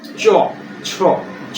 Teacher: জিহ্বাটা তালু উত্তর লেগে উচ্চারিত হচ্ছে চ ছ জ অর্থাৎ জিহ্বাটা উল্টে তাল উত্তর লেগে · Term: তালব্য ধ্বনি